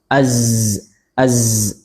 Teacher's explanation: Kemudian saofir bersifat saofir. Sofir artinya ada desisnya, siulnya. · Dia bersifat rakhawah, artinya suaranya terus mengalir, namanya juga zai, Kemudian istifal, ya menurun, lisannya menurun, tidak naik ke atas langit-langit.